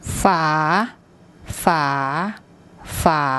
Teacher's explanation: What you should have heard then is it had a rising tone. It sort of went up at the end. That's because this consonant is high class, and it's a live syllable, and for that combination we get a rising tone.